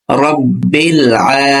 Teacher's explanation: আইনে খাড়া জবর আছে, এজন্য এক আলিফ টেনে পড়তে হবে।